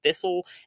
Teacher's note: The T becoming silent like it does in thistle